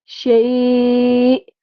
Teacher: حمزہ کو ہم نے ساکن کیا اور جھٹکا لگا کے اس کا وقف کیا